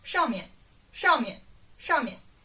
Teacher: in the oral way of speaking, you don't emphasize that 面 part